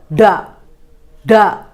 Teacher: പോകാൻ സാധിക്കാതെ തടഞ്ഞുനിർത്തുന്നു പെട്ടെന്ന് തന്നെ മടങ്ങിയിരിക്കുന്ന നാവിന്റെ തുമ്പ് അല്പം നിവരുകയും നിശ്വാസവായു വായിൽ നിന്നും പുറത്തേക്ക് കടക്കുകയും ഡ എന്ന ശബ്ദം ഉണ്ടാകുകയും ചെയ്യുന്നു